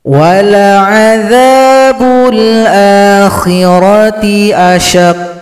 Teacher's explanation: qaf disukunkan, kemudian bunyi pantulannya datang terlambat karena qafnya tasydid. Terlambat dua ketukan.